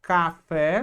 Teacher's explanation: A palavra café, sílaba tônica é a última, a gente acentua.